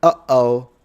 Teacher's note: imagine when cartoons make the sound, uh-oh, that's a glottal stop